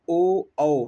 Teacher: उसके बाद ओष्ठ कंठ का होता है, तो ये हो जाता है ओ औ यानी ओठ तो गोल किंतु ध्वनि कंठ से आए